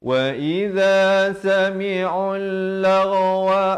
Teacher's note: Huruf waw, huruf alif ziyadah, huruf hamzah wasal dan huruf lam ini, lam yang pertama ini tidak dibunyikan. Jadi ain bari dhammah terus naik di atas lam yang bersabdu.